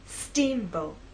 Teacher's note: Now, when you say the word, I want you to think about making the first part at a higher pitch. So our voice will be higher at the beginning and lower in the second part.